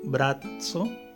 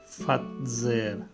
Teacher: Fíjense que la diferencia es simplemente en la sonoridad de las cuerdas vocales.